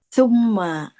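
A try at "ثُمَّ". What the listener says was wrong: Jadi ee giginya itu eh lidahnya keluar sedikit jangan dibalik gigi.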